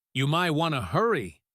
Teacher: when she said, you might want to hurry, the T in want disappears.